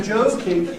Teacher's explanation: If you say you must be joking, you must you must surely mean two words, separate words, because if you say joking, you give the word Joe, you see, at the full value, unreduced, unclipped of a separate word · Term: pre-fortis reduction failures